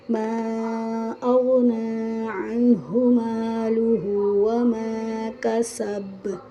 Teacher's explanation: یہاں ہر آیت کے آخر میں با حالت وقف میں ہے تو یہاں قلقلہ ہوگا، پر یہاں با پر تشدید نہیں ہے تو قلقلہ کو بہت واضح کرنے کی ضرورت نہیں ہے